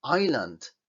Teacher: Porque nos empeñamos en pronunciar esta S cuando veis que en fonética no lleva S, es decir, no se pronuncia la S